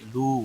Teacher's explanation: لو واو مدہ ہے، 1 الف کے برابر کھینچ کر پڑھیں گے